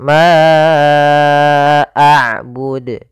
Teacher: terjadi sebagaimana tadiah yaitu adanya Hamzah yang datang setelah huruf mad kita panjangkan untuk huruf Ma panjangnya empat harakat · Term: Mad Jaiz munfasil